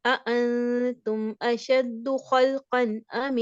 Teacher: تنوین کا نون ہم کامل ادا کریں گے، اس کو ہم چلائیں گے نہیں. اس طرح کی آواز جو نکالتے ہیں نا ہم، جس کو ہم غنہ کرتے ہیں، خلقن امس، یوں ہم کہہ لیں کہ آپ نے سمجھے غنہ کر دیا، جبکہ یہاں پہ غنہ نہیں ہے.